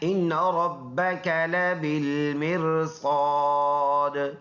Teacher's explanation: یہ نون مشدد ہے، دونوں کو ملائیں گے، یہ نون جماؤں کے ساتھ پڑھیں گے، اور اس نون مشدد میں پکا غنہ ہے، بقدر 1 الف کریں گے۔